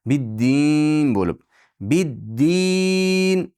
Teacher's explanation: Bid-din jag'izni pastga tushirasiz. I deb ana shunda dimog'dan chiqmaydi.